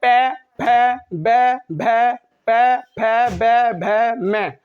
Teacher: पै अगर बोलेंगे तो आप देख रहे होंगे कि हमारे जो दोनों होठ हैं वो दोनों ओष्ठ मिले जा रहे हैं आपस में।